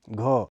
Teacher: है घ इसका उच्चारण ख वर्ण से थोड़ा सा पीछे है यह कोमल तालव्य घोष महाप्राण स्पर्श ध्वनि है